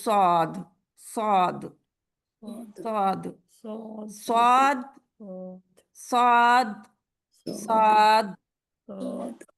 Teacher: जुबान की जड़ ऊपर पर उठी हुई है